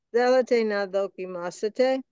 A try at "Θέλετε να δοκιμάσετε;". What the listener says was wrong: Don't go down, but up. Δοκιμάσετε. The accent is here. Δοκιμάσετε. Δοκιμάσετε. Θέλετε να δοκιμάσετε?